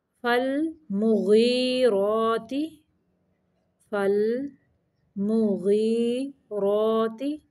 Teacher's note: فالمغیرات، فالمغیرات، یہ مغیرات ہی نہیں پڑھنا، ان دونوں کو برابر لمبا کرنا ہے، غین ذریعہ غی کو بھی اور راکھڑی زبر را کو بھی برابر لمبا کرنا ہے